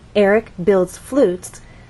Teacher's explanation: and then drop down on flutes our final content word and flutes has only one syllable so we need to slide down as we say that one syllable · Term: falling intonation